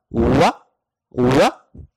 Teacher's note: दोनों होंठों को गोल करने से वाह अदा होता है, या फिर आप इसकी मिसाल इस तरह भी ले सकते हैं जैसे आप उंगलियां बंद करते हैं और खोलते हैं, तो दोनों होंठ एक दफा गोल होंगे, बंद होकर खुलेंगे तो अदा होगा वाह वाह। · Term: वाव